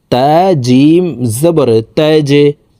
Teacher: আমরা এই তা জিমকে নিচের দিকে ধাবিত করে ধাক্কা দিয়ে উচ্চারণ করে পড়বো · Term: কলকলার হরফ